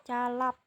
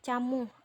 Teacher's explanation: Fonem konsonan ini tidak bersuara, dilapalkan dengan lidah ditempelkan pada langit-langit keras untuk menghambat udara dari paru-paru kemudian dilepaskan. Fonem konsonan C mempunyai satu alofon yaitu C. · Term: hambat palatal